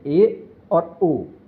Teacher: ऐसे स्वर जिनके उच्चारण में मुख द्वार आधा बंद रहता है सवर्त स्वर कहलाते हैं इसकी संख्या दो होती है ए और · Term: अर्ध सवर्त स्वर